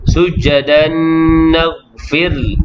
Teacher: Yani hukumnya idgham ma'al ghunnah, memasukkan tanwin ke dalam nun beserta dengung